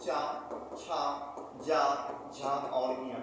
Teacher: तालु से चा वर्ग बोला जाता है।